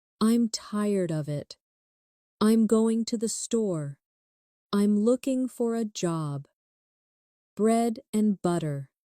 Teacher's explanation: Did you hear how the small words almost disappear? This is natural English speech, and practicing these weak forms will make your speaking more fluid.